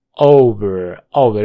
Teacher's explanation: es una a redonda profunda